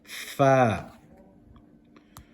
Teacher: The upper teeth touching the bottom lip.